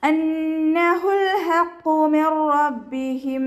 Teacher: ഹ തൊണ്ടയുടെ മധ്യഭാഗമാണ് മഹ്റജ് വരുന്നത്. സൗണ്ടിനെ വ്യക്തമാക്കി ക്ലിയർ ആക്കിയിട്ട് തന്നെ ഉച്ചരിക്കുക.